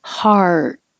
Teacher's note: heart is the same as hot but you have the tongue to curl back